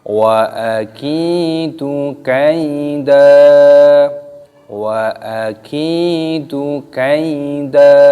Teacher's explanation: Kafnya berharokat kasroh, ada tanda ya sukunya, maka di sini dipanjangkan kafnya mat tabi'i, panjangkan.